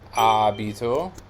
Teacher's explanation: the stress is on the antepenultimate syllable, abito. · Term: sdrucciolo